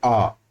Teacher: विवृत का मतलब होता है जिसमें मुख द्वार पूरा खुलता है, विवृत, वी का मतलब ओपन, खुलना। विवृत का मतलब मुख द्वार पूरा खुलता है, जैसे कि हम जब तो बोलते हैं आ, तो आ में हमारा पूरा मुंह खुल जाता है